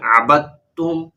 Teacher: جب جوڑ کریں گے، ہجے کریں گے، اس وقت تو دال کا نام لیں گے، لیکن جب رواں پڑھیں گے جیسے یہاں ہم پڑھ رہے ہیں تو اس وقت پھر دال کی آواز نہیں آئے گی بلکہ تا کی آواز آئے گی.